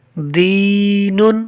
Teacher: دال کو یا مدہ کی وجہ سے کھینچا ہے